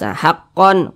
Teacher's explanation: cara membaca nya dibaca jelas tidak berdengung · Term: izhar halqi